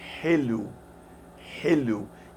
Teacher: It sounds like an H in help, but it's softer. You have to breathe out lots of air in a soft way.